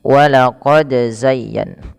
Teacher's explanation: Pada lafal walaqad, pantulkan huruf dal ketika huruf dal tersebut sukun dan di sini diwarnai dengan biru, yang artinya harus dibaca dengan bacaan qalqalah ya teman-teman.